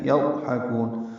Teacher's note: ضاد ساکن ہے اور اس پہ اظہار ہوگا، حا وسط حلق سے ادا کریں گے، کاف باریک ہے اس کو لمبا کریں گے، نون ساکن پہ اظہار ہوگا، مد عارض سکون ہوگی، کاف کو لمبا کریں گے.